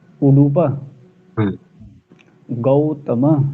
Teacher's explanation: उ उ ह्रस्व है डू भी ह्रस्व है प भी ह्रस्व है